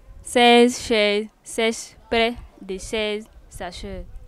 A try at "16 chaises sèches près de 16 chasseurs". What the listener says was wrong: Chasseur, c'est pas sacheur.